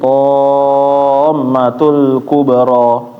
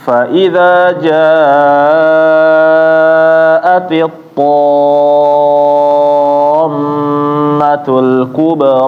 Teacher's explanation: ketemu huruf mim, mim bertasydid, kawannya nun bertasydid, dia harus ditahan ya Bapak, jangan langsung pindah. Jangan kayak menekan huruf tasydid biasa yang enggak ditahan.